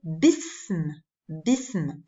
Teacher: Le mot ism, ce qui veut dire prénom ou nom, ism, commence par une hamza, mais c'est une hamza instable, c'est-à-dire que lorsque je rajoute quelque chose avant, comme ici une préposition, je ne la prononce plus comme un coup de glotte